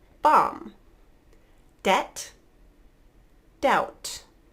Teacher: silent B really common words are these bomb debt doubt notice I'm not actually closing my lips to make the B sound